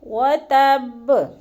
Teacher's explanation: با کو جو ہے نا وقفی صورت میں جزم میں بدل کر پڑھیں گے، یعنی با کے اوپر جزم لگا دیں گے۔